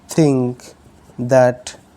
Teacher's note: putting the tongue in between the front teeth which are called inter Dental fricatives